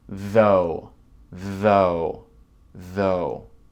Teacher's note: Et avec ce mot, on a le son V. Donc, c'est le deuxième son TH. C'est comme un V. Ça vibre beaucoup.